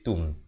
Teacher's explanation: Ta baris depan bukan bunyi to, ta baris depan bunyi tu. Jadi bila bertemu mim jadi tum.